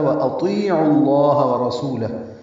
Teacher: وأطیعوا اللہ حمزہ قصہ حلق سے ادا کریں گے، طی یا مدہ ہے، دو حرکات لمبا کریں گے، عین کو لام اسم جلالہ سے ملائیں گے، پر پڑھیں گے عین کی پیش کی وجہ سے.